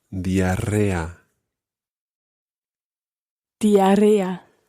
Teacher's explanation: There's a double R sound in there, and you really have to roll those R's.